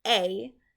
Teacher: And one way I remember is if you kind of say this word A, at the end of that sound, you can hear the Y. And sometimes it's there with the yud, and sometimes it's not. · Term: long A sound